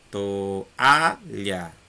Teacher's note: Mas não deixou de ser a sílaba mais forte. A sílaba to e a sílaba lha são átonas, não são tônicas. Por quê? Porque são mais fracas.